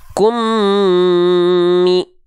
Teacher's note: Idgham itu artinya lebur, lalu dengungkan selama 2 harokat. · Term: idgham mimi